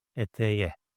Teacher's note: Okay, so if I want to write to the skirt, I need to write etek e. But the last consonant of the word is ke, which is an explosive one. So it needs to alternate itself to the softer version, and it becomes eteye